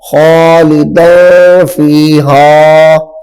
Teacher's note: اخفاء میں سے فا آ رہی ہے تو یہاں پہ غنہ ہوگا